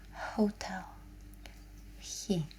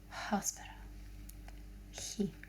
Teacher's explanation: It comes out like a little breath at the back of your throat.